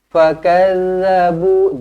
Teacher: dal lembut saja, lidah keluarkan sedikit